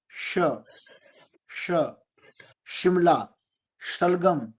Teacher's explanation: और शलगम में, शिमला में जो शकार है वो तालव्य है, तालु से जीवा लगती है।